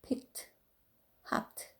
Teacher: t 발음은 그 무성음 consonant like 크, 프, f, s, she, chi 발음이 나는 것들은 트 발음을 해서